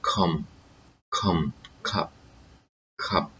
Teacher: Those are unvoiced consonants. This sound k is produced in the upper part of the palate and is cutting the air that comes out with tongue.